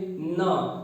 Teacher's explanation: देखिए जो आपकी जीभ है ये एकदम आगे दांत के पास टच हो रही है, दांत से थोड़ा सा पीछे। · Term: वत्सर्य